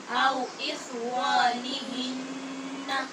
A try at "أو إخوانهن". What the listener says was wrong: خا کو ٹھیک پڑھیں اور واو کو پر کریں او إخوانهن